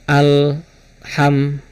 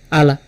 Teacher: Nanti kalau misalkan kita terburu-buru masuknya syiddah dan akhirnya nanti ada tambahan mantul sedikit. Karena lam itu yang harusnya nempel ke langit-langit